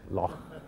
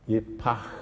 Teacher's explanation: It's a missing sound in our English vocabulary. And that's a long, breathed out sound, an outgoing, long, drawn out sound. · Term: het